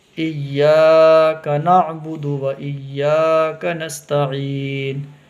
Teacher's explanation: ایا میں یا کو کھینچنا ہے